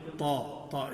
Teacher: زبان کا پچھلا حصہ اوپر اٹھے گا اور طا میں تو وہ اوپر مل جائے گا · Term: تفخیم